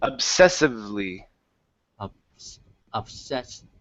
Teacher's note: So yeah, what you want to make sure though, is that instead of pronouncing an F like Frank, it's V. It's a vibration. Okay, V is a voiced sound.